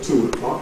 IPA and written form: ˈtuː əˈklɒk (two o'clock)